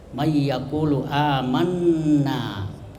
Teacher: Ya, kemudian yaqulu dengan amanna itu ada panjang dua harakat atau satu alif, ya, mayyaqulu, amanna. Kemudian amanna itu ada nun tasdid, itu disebut gunnah. Gunnah itu mendengung